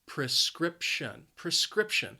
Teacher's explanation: the stress is on that second syllable.